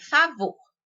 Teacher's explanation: A sílaba vor é a de maior intensidade. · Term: sílaba tônica